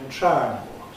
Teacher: Can you hear how the i has gone? Instead of triangle, I'm saying triangle. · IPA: [ˈtraæŋgl̩]